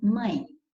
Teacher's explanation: você sabe que eu tive serve para nasalizar as vogais então você já tem aqui a vogal a nasal e depois o e pronunciado na mesma sílaba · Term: ditongo decrescente